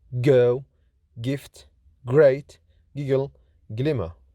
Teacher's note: G is voiced, lenis, velar, plosive